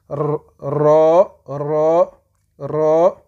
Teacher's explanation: Le za, la langue reste à son endroit, il ne bouge pas. Le ra, la langue, il se met en haut sur le palais et on roule, on fait rouler la langue